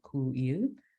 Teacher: Their diphthongs actually separated. There was a slight sort of glottal stop inserted between the vowels.